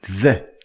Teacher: is a voiced sound which means that you use your vocal chords to pronounce it